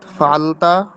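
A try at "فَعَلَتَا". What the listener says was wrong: এই যে আপনি ফালতা পড়তেছেন, আপনি হচ্ছে ফালাত ফালাতা হবে।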